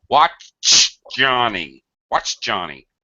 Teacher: I'm leaving my tongue up on the roof of my mouth, and just the tip of my tongue folds a little, and I spit a little air out.